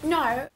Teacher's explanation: So when I say “no” I'm kind of going from an “uh” to an “oh” to “oo”.